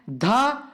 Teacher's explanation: धा, ये हमारे दंत से बोली जाती है